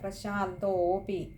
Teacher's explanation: അതേപോലെ പ്രശാന്തോപി അവിടെ ഒകാരം നീട്ടിയെടുക്കുക